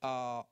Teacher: on va avoir une vibration des cordes vocales qu'on ressent très bien. Il suffit de mettre son doigt au niveau du cartilage thyroïde.